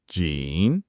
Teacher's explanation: The first part is third tone. Jean falls and rises a little. The second is first tone.